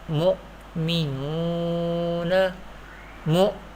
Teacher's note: hamza sakina will be pronounced with sudden pause